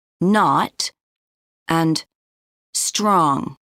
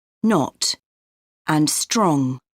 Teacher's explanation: one of the most noticeable differences is the pronunciation of o in North American English o often sounds like ah